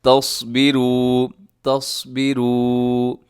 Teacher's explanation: آگے دیکھیے گا وَإِن تَصْبِرُوا، یہاں نون ساکن کی بات ہے، یہاں بھی اخفا ہوگا۔ تصبروا میں صاد موٹا رکھیے گا، اسے آپ نے تصبروا نہیں پڑھنا، یعنی صاد کو سین سے اگر آپ بدل دیں گے تو یہ بڑی غلطی ہے جسے کہا جاتا ہے لحن جلی۔